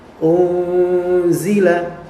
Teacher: huruf ikhfa maka ini disebut sebagai ikhfa Hakiki yaitu disamarkan unzila nunnya tidak dibaca Zahir jelas tidak tapi disamarkan disembunyikan karena ikhfa itu artinya menyembunyikan jadi tidak dibaca Bima unzila unzila